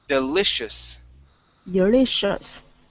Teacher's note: it's delicious okay all right so deli so here we're gonna we're gonna use an sh here in the middle and end with an s at the end